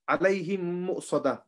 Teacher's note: you will merge the two memes together and you'll just read the second meme